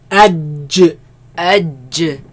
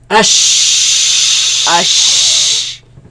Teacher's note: جيم شين يا. Okay, they come from the middle of the tongue against the middle of the upper palate